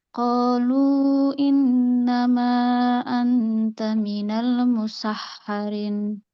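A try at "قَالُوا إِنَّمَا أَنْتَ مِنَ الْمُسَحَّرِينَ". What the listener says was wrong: Panjang panjang musharin panjang.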